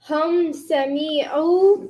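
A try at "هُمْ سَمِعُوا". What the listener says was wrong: The me was too long again.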